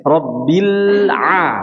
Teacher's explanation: Jadi alif lamnya disempurnakan, dialiri sedikit lamnya ya. Rabbil A, jangan Rabbil A, Rabbil A memutusnya dengan tiba-tiba sehingga menjadi pantulan ya. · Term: sifat bainiyah